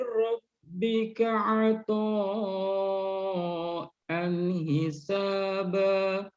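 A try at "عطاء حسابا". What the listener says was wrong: Jadi untuk yang apa namanya hukumnya izhar ata'an hisaba, jangan sampai diputus antara tanwin dengan huruf izhar, itu jangan diputus. Jangan ata'an hisaba, jangan ya. Ata'an hisaba. Jangan cepat, tapi alirkan, Pak. Ata'an hisaba.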